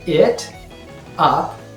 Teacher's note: the t sound in it becomes a little bit softened